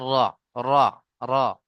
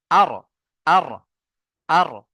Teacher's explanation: আগার উল্টো পিঠ এবং তার বরাবর উপরের তালুর সাথে লেগে উচ্চারণ হয় র